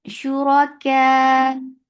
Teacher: Ra is heavy. Whenever ra is with dhamma and fatha, it is heavy, so it is heavy here.